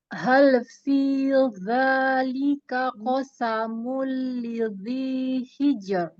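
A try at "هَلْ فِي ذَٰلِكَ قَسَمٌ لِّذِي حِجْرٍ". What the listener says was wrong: Lagi, keluarin lidahnya. Keluarin lidahnya, ujung lidah. Ketemu ujung gigi seri atas. Kan jadi dha. Fi dha. Fi dha.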